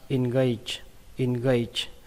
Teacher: Nó kết thúc bằng âm chờ các bạn nhé. Âm chờ đây, âm chờ rung, nó không bắn hơi nhiều.